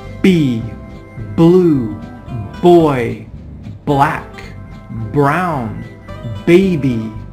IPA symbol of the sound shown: b